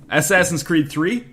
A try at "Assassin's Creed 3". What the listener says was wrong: it sounds like you're saying ass ass in not assassin